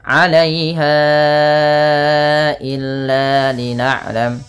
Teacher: Panjangkan bunyi ha yang ditandai dengan tanda pedang kecil seperti ini dan warna pink bertemu dengan hamzah setelahnya. Maka ini wajib dipanjangkan 4 harakat pada lafal bunyi ha